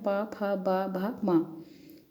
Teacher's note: दोनों ओंठ हमारे आपस में टकराते हैं, ऊपरी होंठ और नीचे के होंठ ही उच्चारक और उच्चारण स्थान पे दोनों रहते हैं। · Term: ओष्ठ्य